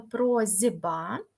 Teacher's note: б впливає на с так що с стає з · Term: асиміляція